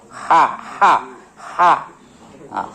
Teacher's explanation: ha makhrajnya dari tengah tenggerokan sifatnya rakhaah